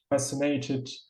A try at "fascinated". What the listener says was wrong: So just the wrong word stress there. Not fascinated, but fascinated.